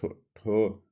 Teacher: हिंदी की ठो ध्वनि है मूर्धन्य से